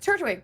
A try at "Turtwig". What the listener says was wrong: It's the second T that you're way over pronouncing. That's what's fucking me up. You're going Turtwig. If you could just go Turtwig.